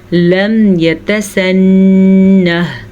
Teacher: نون کا غنہ ادا کر لیجیے گا کیونکہ نون پہ شد ہے · ہا ساکن ہے تو اس کی آواز ضرور آنی چاہیے، نون پہ غنہ ہوگا.